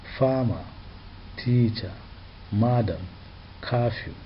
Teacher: these words have stress on the first syllable: farmer, teacher, madam, curfew